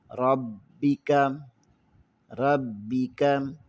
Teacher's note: یہاں پر را کو موٹا پڑھیں گے اور با کے ساتھ ملائیں گے کیونکہ با پر شد ہے۔ · کاف کو موٹا نہیں پڑھیں گے، کاف کو باریک پڑھیں گے۔